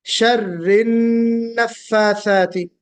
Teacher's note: اذا شر النفاثاتی کو آپ نے، میں نے جب آپ کو دوبارہ بھی پڑھوایا تو بھی آپ نے شرری نفاثاتی پڑھا، تو شرری نفاثاتی نہیں بلکہ را کو نون میں ملا کر پڑھیں گے۔ وَمِن شَرِّ غنہ بھی کریں گے، شَرِّ النفاثاتی، اس طرح پڑھیں گے۔